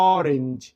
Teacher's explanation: উচ্চারণটা আলাদা হচ্ছে, উচ্চারণটা ওয়া হচ্ছে না, উচ্চারণটা অ হচ্ছে